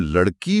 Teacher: जब हम लड़की बोलते हैं तो अंत की इ की ध्वनि लंबी खींचती है। हां बड़ी ई की मात्रा है तो समय लगता है।